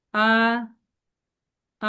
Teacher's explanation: এর উপর যে টোনটা গিয়েছে এই টোনকে ফ্ল্যাট টোন বলে, এটা ফ্ল্যাট ভাবে, ফ্ল্যাট ভাবে যাবে।